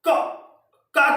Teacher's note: का को बोलने से पहले में गले को चौक करना पड़ता है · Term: कंठ